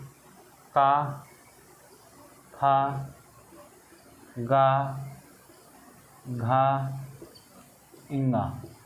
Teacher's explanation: पहले जो है का खा गा का उच्चारण यहाँ कंठ से होता है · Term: कोमल तालव्य